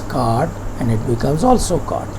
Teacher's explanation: some people do not make any distinction, any difference between coat and cart, and both are pronounced as cart